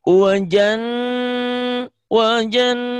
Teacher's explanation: Ternyata nun itu bukan hanya nyamber dan dobel. Harus ditahan dan harus dengung. Itulah gunnah.